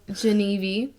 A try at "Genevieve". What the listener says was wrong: You wrote out Genevieve and you're pronouncing it Geneve.